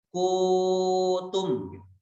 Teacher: Jadi ku-nya yang dibaca panjang, dhammah berhadapan dengan wawu.